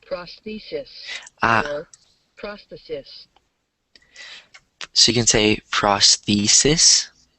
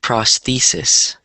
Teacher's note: so the stress is in the second syllable